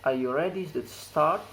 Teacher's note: It's a rising intonation at the word start. It is used to express general question.